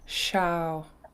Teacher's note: this is a long low A, so you guys sound good, low tone.